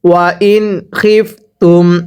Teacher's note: ওয়াও জবর ওয়া, হামজা নুন জের ইন, ওয়া ইন। এই যে নুন সাকিনের পরে যদি এরকম খ ইজহারের হরফ থাকে তাহলে নুন সাকিনগুলো স্পষ্ট করে পড়তে হবে